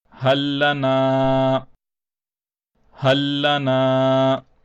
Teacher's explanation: The first lam is sakin, and the second lam therefore is mushaddad. Now the first lam will not be pronounced at all, and we will only skip over to the next lam. So this will be pronounced as hallana, hallana.